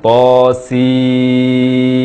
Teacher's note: to dibaca 2 harakat dan sin dibaca 6 harakat.